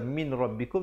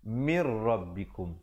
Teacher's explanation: Asalnya min rabbikum, tapi kalau kita baca min rabbikum jadi bacaan yang jelas, bacaan izhar. Di sini kena baca dengan wajah idgham bila gunnah, masuk tanpa dengung.